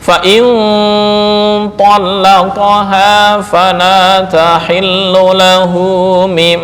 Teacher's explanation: Fain in an. Tapi karena bertemu dengan th menjadi ikhfa. Berpindah dari ujung lidah masuk ke khaisyum.